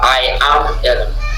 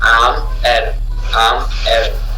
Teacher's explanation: Parce que le am est non accentué. Et le I aussi est non accentué.